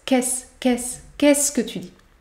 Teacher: ici on ne prononce pas le E à la fin de qu'est-ce.